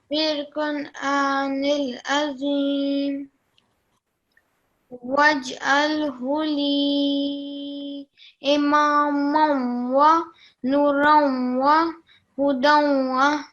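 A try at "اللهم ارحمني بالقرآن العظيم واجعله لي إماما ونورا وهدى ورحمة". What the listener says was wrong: Okay, well done.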